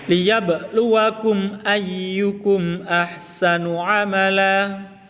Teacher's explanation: Mimnya disuarakan dengan terang, jelas, tanpa berdengung atau tanpa bibir dengan mulut tertutup atau tanpa disamarkan. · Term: idhar syafawi